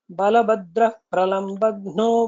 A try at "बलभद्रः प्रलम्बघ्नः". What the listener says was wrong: Mahaprana did not come very well.